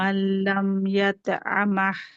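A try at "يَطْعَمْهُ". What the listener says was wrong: না, ইয়াতা না, ইয়া ত কলকলা আতো ইয়াতো। আর হাটা take care of your হা।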